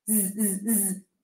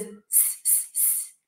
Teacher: The Z sound is the pair of the S, the consonant pair of the S. Only the Z is voiced, so we activate the vocal cords